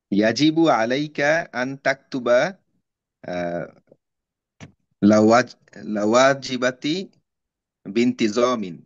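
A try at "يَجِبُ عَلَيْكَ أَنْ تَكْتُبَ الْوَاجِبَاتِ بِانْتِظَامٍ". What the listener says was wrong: আচ্ছা, এর ভুল আছে, ওয়াজিবাতি লামের উপর সুকুন হবে। তাহলে ইয়াজিবু আলাইকা আন তাকতুবাল ওয়াজিবাত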